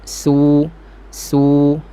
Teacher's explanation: Nipis, su, su. Bunyi safir, desiran bunyi macam ular tu jelaskan. · Jangan gunakan tengah dan pangkal lidah, biar terletak je, hanya hujung lidah sahaja. Makhraj sin, hujung lidah di antara gigi bawah dan gigi atas. Nipis, su, su. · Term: sifat safir